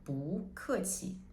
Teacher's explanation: the first character 不, it also changes the tone to the second tone. So 不客气, because it goes with 客.